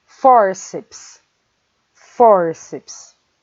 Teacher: A palavra fórceps termina com PS, vejam, e a sílaba tônica é for. Por isso, ela vai receber o acento agudo.